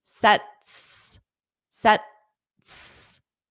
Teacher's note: So you don't push out the sound for the T. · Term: flat T